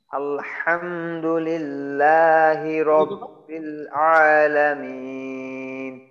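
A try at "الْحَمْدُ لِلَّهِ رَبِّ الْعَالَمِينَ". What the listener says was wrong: তো এই যে হামজা জবর আ, তাহলে হামজা লাম জবর আল, যেন আল না হয়। হ্যাঁ, আলহামদু যেন না হয়, আলহামদু, আলহামদু। হামজাটা আরো একটু শক্ত করার চেষ্টা করা। আ, হামজা জবর আ, ঠোঁটটা চওড়া হবে। হ্যাঁ, হামজা জবর আ।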